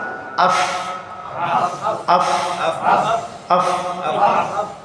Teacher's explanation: ফা উচ্চারণ করার সময় উপরের দাঁতের আগা, নিচের ঠোঁটের পেট খেয়াল রাখবো, দুই ঠোঁট যেন মেলে না মেলে। এই জন্য নিচের ঠোঁটের পেট, উপরের দাঁতের আগা।